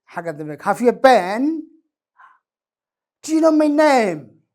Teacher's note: Any question u baahan yes iyo no, endiga dambe waxaa ka muuqda dhammaadkeeda rising intonation ha.